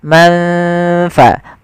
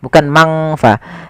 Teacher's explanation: Sedangkan ikhfa adalah membaca suara nun di antara keduanya, di antara izhar dan idgham. Maka samarkan ke huruf fa, manfa, bukan mangfa.